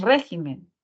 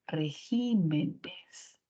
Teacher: cuando se le añade el plural a esta palabra la sílaba tónica se mueve · cuando se le añade el plural, la sílaba tónica se mueve, se cambia a ji. Entonces la palabra ya no es régimen, sino la palabra es regímenes.